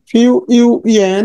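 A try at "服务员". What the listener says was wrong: হ্যাঁ ফিউ না ফু ফু দেন ফু ফু তারপর উ ফু ইউএন ফুয়ু ইউএন ফুয়ু ইউএন ফুয়ু ইউএন waiter ফুয়ু ইউএন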